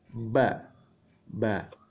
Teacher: makhroj huruf ba adalah bibir atas dan bibir bawah dirapatkan bersama-sama